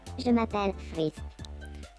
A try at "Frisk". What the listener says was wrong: Alors, tu vas pas me le prononcer à l'anglaise. Du coup, on va l'écrire comme ça. Pour que tu le prononces à la française.